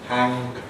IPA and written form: hæŋg (hang)